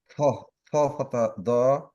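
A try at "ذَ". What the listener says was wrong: না না, আপনি দ এর উচ্চারণ করেন, কিন্তু জিভটা একটু বের করেন। জ, জ।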